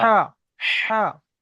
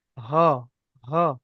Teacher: আমি দুটো হা শিখিয়েছি, একটা বড় হা, কেমন এটা হবে, হালকা আওয়াজে, এটা বড় হা। হা, হা, এমন ভাবে। আর যেটা ছোট হা সেটা হ, হ, গম্ভীর আওয়াজ। গম্ভীর আওয়াজে হবে।